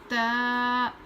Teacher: जुबान की नोक को ऊपर के दांत पर लगाकर पढ़ते हैं ता ऊपर के दांत पर लगाकर पढ़ते हैं।